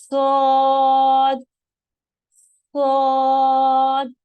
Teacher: जब आप इसको कहना शुरू करेंगे तो आपकी जुबान की जड़ जो है वो तालु की तरफ बुलंद हो जाएगी और आवाज मोटी हो जाएगी। सौद, सौद। पीछे से आपकी जुबान की जड़ तालु की तरफ बुलंद होगी। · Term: मोटे हुरूफ